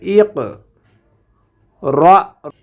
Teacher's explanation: কফটা কলকলার হরফ, এই জন্য এখান থেকে পাল্টা আওয়াজ হবে